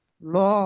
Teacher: আল্লাহ লামে মোসাদ্দাতের পূর্বে জবর আছে তাই আল্লাহ লামকে পুর করে পড়তে হবে